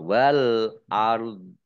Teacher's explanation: Wal ard, alif lamnya, alif lam komariah, ditandai lamnya dibaca sukun. Kemudian ro sukun, dho-nya juga dibaca sukun karena wakof, maka dibaca antara ro dan dho. Wal ard. Jadi yang belakang agak berat gitu.